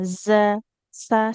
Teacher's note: za ini nanti kalau terlalu banyak nafasnya jadi sin dia.